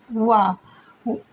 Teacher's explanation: दंतोष्ठ में आता है वा। वा का उच्चारण स्थान दंतहोष्ट है।